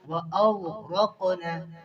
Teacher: غین کو موٹا پڑھیں گے اور قاف کو بھی موٹا پڑھیں گے. یہاں پر قلقلہ ہو رہا ہے.